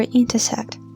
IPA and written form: ˌɪn.təˈsekt (intersect)